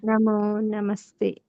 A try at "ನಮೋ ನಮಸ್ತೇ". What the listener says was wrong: ನಮಸ್ತೆ ದೀರ್ಘ ಇದೆಯಲ್ಲ ಹೇಳಿಬೇಕು